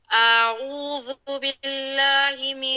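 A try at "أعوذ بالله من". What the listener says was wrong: اب عین آپ نے عین کی پیش کا ادا کیا لیکن واو کا آپ نے ادا نہیں کیا، بالکل اس کو ختم کر دیا ہے. اعوذ.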